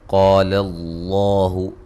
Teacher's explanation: لفظ اللہ کو خوب موٹا ادا کریں گے